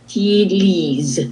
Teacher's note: And don't forget about that z. Z, yes, because it's between two vowels.